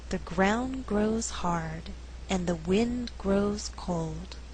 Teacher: in this slower reading all content words are stressed they are ground grows hard wind grows cold